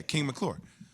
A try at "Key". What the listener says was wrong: No, it sounded like you said King.